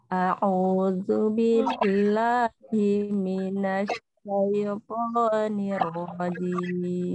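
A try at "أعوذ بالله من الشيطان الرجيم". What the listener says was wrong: Tinggal syanya ya Bu. Sya. Dia udaranya itu apa namanya menghembur di dalam bibir. Sya. Minas di dalam mulutnya. Minas syaitan gitu.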